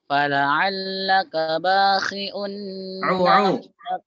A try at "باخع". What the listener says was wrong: Baik, ainnya jelaskan di situ. Bakhi'un